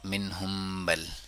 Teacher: جب بھی میم ساکن کے بعد با آتی ہے تو اب جو میم ساکن کے لیے ہونٹ ایک دوسرے سے ملاتے ہیں، اسی ملاقات کو جب الوداع کہتے ہیں ہونٹ ایک دوسرے کو، سیم ٹچ ریلیز ہوتا ہے، چھوڑتے ہیں، تو اس سے با بھی ادا ہوگا، ہم بھی.